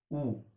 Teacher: तो जब ऊ को बोलोगे तो आगे से मुंह गोल हो जाएगा। मुंह जो है ऊ बोलने में आगे से होठ गोल हो जाएंगे, ऊ। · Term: वृत्तमुखी